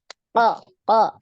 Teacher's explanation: dinaikkan pangkal lidah yang naik itu di makhrajnya huruf qaf ya n coba dirasa-rasakan ketika huruf qf lidahnya naik ya yang bagian